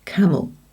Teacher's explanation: It's the E that is swallowed. It goes camel. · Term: schwa